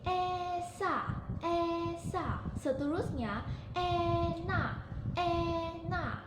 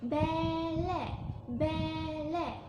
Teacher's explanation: Yang pertama, keadaan bibir dihamparkan seperti yang ditunjukkan dalam gambar raja tersebut. Seterusnya depan lidah dinaikkan separuh rendah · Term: vokal depan separuh luas